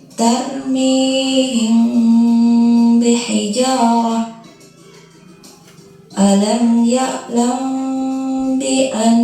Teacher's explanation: cara membaca ikhfah syafawi yaitu dengan suara yang samar antara mim dan ba pada bibir kemudian ditahan kira-kira dua harakat atau ketukan · Kemudian ditahan kira-kira 2 harokat atau ketukan seraya mengeluarkan suara ikhfa dari pangkal hidung. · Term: Ikhfa Syafawi, ikhfa syafawi